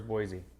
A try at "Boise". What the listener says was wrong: There's no Z in Boise.